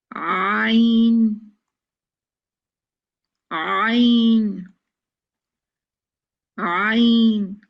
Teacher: जुबान के पिछले हिस्से को नीचे रखकर गले की तरफ दबाएं तो आईन निकलेगा